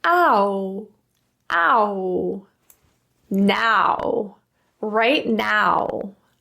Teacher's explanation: the important thing is that you're transitioning to a rounded position at the end.